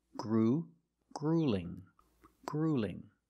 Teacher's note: don't pronounce this word gruelling it's not gruelling it's grueling grueling the first vowel is the long ooh like food and boot · The first vowel is the long oo, like food and boot.